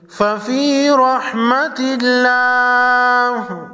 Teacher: رحمت اللہ، لفظ اللہ سے پہلے حرف تا پر زیر ہے، لفظ اللہ کے لام کو باریک پڑھیں گے۔